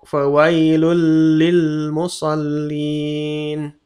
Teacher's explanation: Fawailul lil musallin. Tanwin bertemu lam, langsung masuk fawailul lil musallin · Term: idgham tanpa gunnah